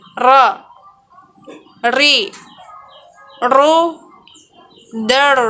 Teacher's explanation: Mengucapkan huruf ro dikeluarkan dengan cara menyentuhkan lidah yang terdepan atau disebut dengan adna lisan dengan langit-langit bagian depan.